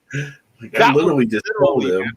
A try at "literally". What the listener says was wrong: Not just literally, but literally, right? You pronounce every syllable out.